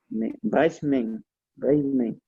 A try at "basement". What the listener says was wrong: It looks like bass, but it's supposed to be base. It's basement. Basement.